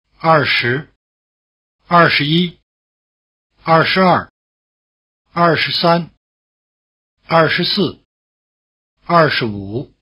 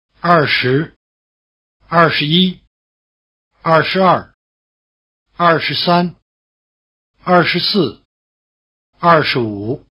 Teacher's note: when 十 is in the middle syllable, in a three-syllable number, such as 二十一, it is weakened to the point where it loses its tone